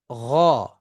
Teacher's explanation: মুখের তালুর শুরুর অংশ এবং হচ্ছে কি জিহ্বার শুরুর অংশ থেকে উচ্চারিত হচ্ছে গয়ন। আচ্ছা, গয়নকে যখন আমরা উচ্চারণ করব, দেখেন গ, দেখেন এই জিহ্বাটা কিন্তু এই যে উপরের তালুতে গিয়ে লাগে, তার মানে সেটা হচ্ছে ভিতরের অংশ, এই যে এই দিকের অংশটার মধ্যে গিয়ে লাগে, ঠিক আছে, এই দিকের অংশ।